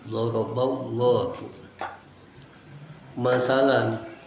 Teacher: Tafkhim lafzul jalalah karena sebelumnya ada fathah ba